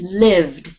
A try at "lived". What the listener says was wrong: Say lived. Lived. Try not to get too much E in there. It's lived.